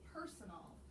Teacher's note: Son is another unaccented syllable. The accent is on per, and in this word personal, we have two syllables that have the schwa sound. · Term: schwa syllable